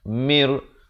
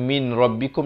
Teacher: idgham bila gunnah. Masuk tanpa dengung. Mir, bukan min rabbikum lagi, jadi mir rabbikum.